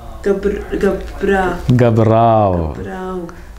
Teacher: the O vowel of gabro changes into A. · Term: contraction